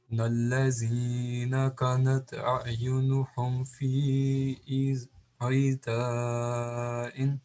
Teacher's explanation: یہاں پہ نون غنہ جو ہے وہ پڑھنا ہے، ناک سے جو پڑھا جاتا ہے چھپا کے، اس کو اخفا کہتے ہیں ہم